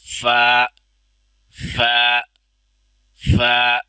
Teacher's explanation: نیچے والا جو ہونٹ ہے اوپر والے جو دانت ہیں ثنایا ان کو نیچے والے ہونٹ کے ساتھ لگا کے ادا کرنا ہے